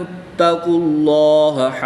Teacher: اس میں جلالت اللہ عز و جل کے لام سے پہلے حرف پر پیش ہے تو اس لیے اس لام کو پر یعنی موٹا پڑھیں